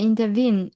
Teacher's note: And vene, yes, stress is on the vene